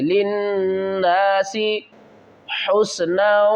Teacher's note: لام کو نون سے ملائیں گے، نون مشددہ غنہ کریں گے